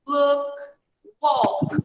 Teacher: in these verbs that finish with K, here like cook, look, walk. We make a sound of T. A sound of T when we make the past.